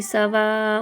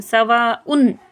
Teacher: اب یہاں پہ تنوین یعنی کہ 2 پیش کے بعد عین آیا، اور عین جو ہے حرف حلقی میں سے ہے، یعنی کہ یہاں پر اظہار ہوگا۔ اظہار کا مطلب ہوتا ہے یہ جو تنوین ہے اس کو ناک میں نہیں پڑھیں گے